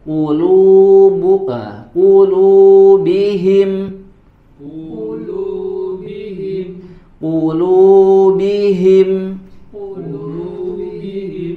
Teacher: Nah maka di sini huruf qof dibaca dengan tebal ya berharakat damah